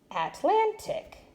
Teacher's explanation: I want to try to move my accent to the second syllable